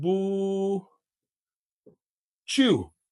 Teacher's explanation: you now guys you remember that if as in Whata right if we have the ye sound and it goes after the T sound it gives us this CH